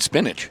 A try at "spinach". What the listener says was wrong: You added a D.